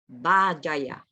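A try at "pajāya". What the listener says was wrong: Not Bajaya. This is wrong. Pajaya. P.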